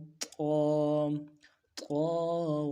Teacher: جو green گین ہے، یہ طا ذات جو گرین گین لکھا ہوا یہ موٹا حروف ہے، ان کو موٹا کرنا ہے۔ موٹا کرنے کے لیے زبان کا بیچ بھی اوپر تالو کی طرف تانا۔